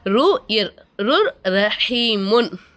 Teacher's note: ஒரு எழுத்தை இன்னொரு எழுத்தோட ஜாயின்ட் பண்ணி குன்னா செய்யாம ஓதணும் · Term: இதஹாம்